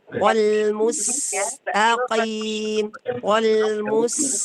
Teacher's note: bacalah huruf sin dengan tipis sebagaimana huruf ta, karena jika dibaca tebal maka huruf sin akan berubah menjadi shad